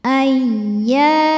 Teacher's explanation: Huruf ya tasydid kita baca dengan nabr. Karena ada ya tasydid yang sebelumnya bukan tanwin atau nun sukun, maka kita bunyikan dengan menaikkan intonasi suara kita.